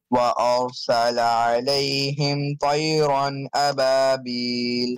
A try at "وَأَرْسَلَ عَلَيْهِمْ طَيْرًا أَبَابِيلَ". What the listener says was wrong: طَيْرًا make the ta heavier again